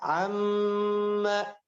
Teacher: Tahan lebih lama. Mimnya guna.